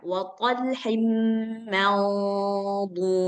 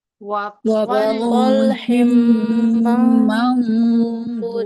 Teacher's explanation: Nah, jadi dia ikut tebal. Suara daripada nun sukun itu udah siap-siap ke makhraj dhad, maka suara nunnya jadi tebal, gunnahnya jadi tebal. Jadi nggak boleh dibaca man tipis kemudian ketika mengucapkan dhad ditebalkan.